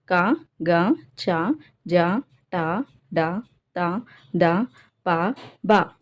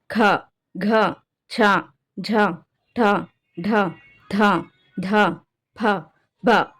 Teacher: ఒత్తి పలికే అక్షరాలను మహాప్రాణాక్షరాలు అంటున్నాం, ఓకేనా. అల్ప ప్రాణాక్షరాలు అంటే తేలికగా పలికేవి, మహాప్రాణాక్షరాలు అంటే ఒత్తి పలికేవి